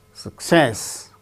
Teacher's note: success with stress on second syllable